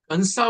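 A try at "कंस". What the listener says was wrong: it should not be Kamsa. It should be Kangs. Kangs. Not Kamsa. Kangs.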